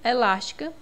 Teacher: elástica na sílaba las né é a mais forte é a anti penúltima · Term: proparoxítona